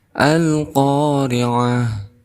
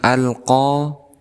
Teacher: alif lam yang dibaca jelas, maka kita hukumi sebagai Al-Qamariyah